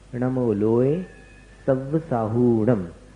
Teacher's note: साहूणम में ह में जो ऊ है, हु, उसको दीर्घ बोलना, उसको शॉर्ट में नहीं बोलना, जल्दी नहीं बोलना।